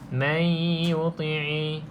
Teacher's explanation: nun yang kosong ni selepasnya huruf ya, maksudnya bukan huruf lam, bukan huruf ra, maka tuan-tuan dan puan baca dengan dengung. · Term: idgham ma'al gunnah